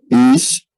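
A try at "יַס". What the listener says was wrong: Te faltó la patah. Entonces está compuesta de la yod, la patah y la sameh. Bueno, entonces aquí tenemos una consonante que es la yod, la vocal, pero entonces tiene una segunda consonante, porque la sheva nos indica hasta dónde va la sílaba.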